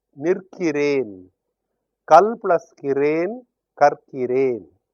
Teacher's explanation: Nil plus kiru plus yen, l becomes r, so that the pronunciation will be easier. The result is you have nirkiren.